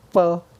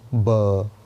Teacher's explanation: प और ब में क्या डिफरेंस है, प में भी होंठ मिलते हैं, ब में भी होंठ मिलते हैं। प में होंठों पे प्रेशर आता है और ब में प्रेशर नहीं आता।